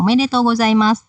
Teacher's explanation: Karena bahagia kita ucapkan dengan nada yang tinggi semua ya.